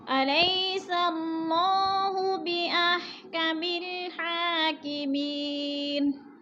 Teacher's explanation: ہا کے اوپر کھڑی زبر ہے، کھینچ کر پڑھنا ہے. می پہ یا مدہ ہے، یا مدہ کو بھی 2 حرکات کے برابر کھینچ کر پڑھنا ہے.